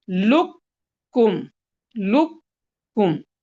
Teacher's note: काफ को बिल्कुल कैंसिल कर देंगे, लाम के साथ सीधा कैफ के पास जाएंगे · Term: ताम